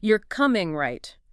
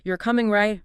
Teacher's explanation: falling sounds more like a statement expecting agreement. The intonation adds that subtle layer of attitude or expectation. · A falling pitch on a tag often implies the speaker is more certain. Maybe just stating something they expect the listener to accept.